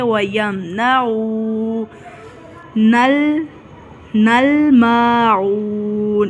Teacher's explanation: واؤ ساکن ہے، پیش ہے تو عین کو کھینچ کے ادا کریں گے